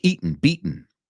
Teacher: we do the glottal stop in American English.